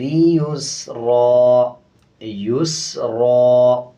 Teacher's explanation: یہ را موٹا ہوگا کیونکہ اس کے اوپر 2 زبر ہیں، جب وقف کریں گے تو ایک زبر پڑھیں گے اور ایک زبر سائلنٹ کریں گے۔